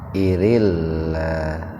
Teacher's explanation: lafaz Allah lafzul jalalah didahului oleh kasroh, jadi dibacanya tipis ya